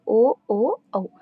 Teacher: కంఠ్యోష్యములు అంటే కంఠము పెదవులు రెండింటి నుండి పుట్టినవి